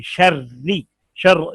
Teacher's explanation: शर्री के नीचे जेर है, तो ये कसरे की वजह से ना रा बारीक होगी